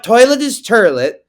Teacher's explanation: the type of New York accent where they switch the O and the r sounds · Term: turn of the century New York accent